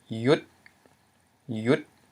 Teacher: So by reading this word, we know since it is a mid-consonant followed by a short vowel and dead syllable, it's pronounced with a rising tone · So we have rising tone yet again.